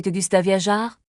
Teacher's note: Le verbe viajar se prononce avec un R bien roulé.